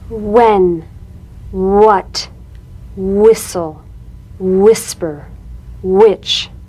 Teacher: words that begin with WH are pronounced H W